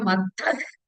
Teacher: Visarga followed by Ka. So it is Jihva Mulya.